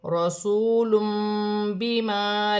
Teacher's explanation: تنوین کی آواز کو میم سے بدل کر غنے کے ساتھ ادا کیا جائے گا